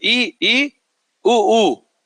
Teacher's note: इसमें मुख क्या होगा बंद रहेगा इसलिए क्या है बंद स्वर पर जीव सबसे ऊपर उठा है इससे ऊपर जीव अब नहीं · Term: उच्च स्वर